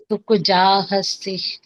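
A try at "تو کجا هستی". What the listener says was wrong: Very good है।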